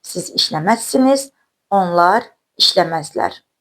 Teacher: qeyri-qəti gələcək zamanda ar şəkilçisi R samitinin Z samitinə keçməsini müşahidə edirik